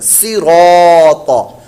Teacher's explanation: پر موٹا، طا حروف مستعلیہ میں سے یہ بھی پر موٹا، تینوں ہی پر موٹے پڑھے جائیں گے، اس میں را کو ہم نے لمبا کر کے پڑھنا ہے